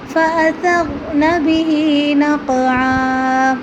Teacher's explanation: نقعا کی قاف کے اوپر قلقلہ کریں گے، اس پر دوسری آواز نکالیں گے